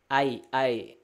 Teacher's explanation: supaya jadi satu vokal miring A ke I gitu ya. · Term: imalah